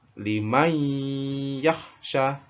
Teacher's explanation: mai, baca mai-nya itu 3 ketukan, 3 harokat